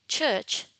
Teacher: the articulators involved are the alveolar ridge and the hard palate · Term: affricate sounds